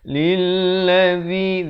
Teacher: Lilladzi, lam bari kasrah itu terus naik di atas lam yang bersabdu. Lilladzi, zi di hujung lidah, dua harakat baris kasrah.